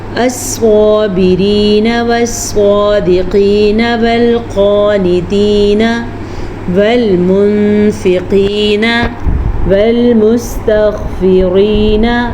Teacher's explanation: ہم نے صاد کو پر پڑھا، قاف کو پر پڑھا اور غین کو پر پڑھنا ہے۔